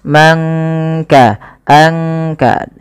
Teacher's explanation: Kemudian man kasaba, tidak kita baca man kasaba, tapi disamarkan suara nunnya kepada huruf kaf. Mangka, angka, langsung kepada makhraj daripada huruf kaf itu sendiri. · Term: ikhfa